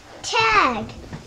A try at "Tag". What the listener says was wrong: Tag, that's right.